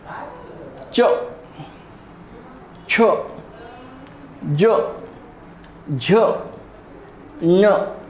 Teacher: देखिए, ये च वर्ग के वर्ण जो है, च वर्ग के वर्ण का उच्चारण तालु स्थान से होता है।